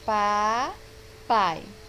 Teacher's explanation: o A seria a vogal, por ser mais forte, por apresentar um som mais forte, e o I, a semivogal, por apresentar um som mais fraco · Agora, pronunciem devagar a palavra papai. Vejam que na segunda sílaba nós temos o A e o I na mesma sílaba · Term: encontro vocálico